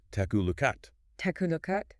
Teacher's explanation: Takalookat. The K in take slides into the A, the K in look slides into at, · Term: consonant-vowel linking